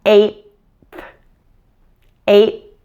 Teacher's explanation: You'll notice that the T and the TH are blended together as one sound. There's no stopping, there's no pausing at all between those two sounds.